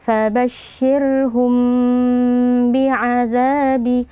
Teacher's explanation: Cara membacanya, mim sukunnya kita baca dengan gunnah yang sedikit samar. Artinya samar, kita tidak perlu menekan makhraj huruf mim yaitu dua bibir secara berlebihan ya, tapi kita hanya sentuhkan, kemudian kita baca dengan gunnah atau dengan dengung. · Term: ikhfa syafawi